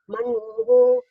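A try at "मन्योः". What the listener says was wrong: Not Manvoho. It is Manyu becomes Manyoho. Man, Yakara and Vakara. If Yakara sound also is there. Manyo.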